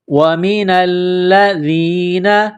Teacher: نون کو لام کے ساتھ ملانا ہے، لام مشدد ہے تو لام کو دبانا ہے، سختی کرنی ہے، دال کو نرم